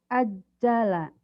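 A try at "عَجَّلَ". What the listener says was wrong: Ain yang nggak keluar. Ajala yu'ajjilu ainnya teu bisaeun, belum keluar.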